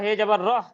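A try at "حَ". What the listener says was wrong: শোনেন, হে বলছেন কেন, এটা হে। তাই এটাকে হা ধরবে,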